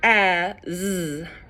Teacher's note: the a follows the letter sound correspondence we would expect but the S does not it makes the z sound